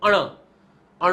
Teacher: અણ, અણ તમે બોલશો તો નાક છે, નાકમાંથી હવા નીકળતી હોય એવું તમને ફીલ થશે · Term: અનુનાસિક